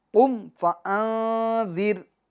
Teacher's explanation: اس کے میم کے سکون میں جنبش نہیں دیں گے، آواز نہیں لوٹائیں گے، یعنی قم، قم، قم فانذر، قم، بلکہ قم، آواز رک جائے گی، قم فانذر، ٹھیک ہے۔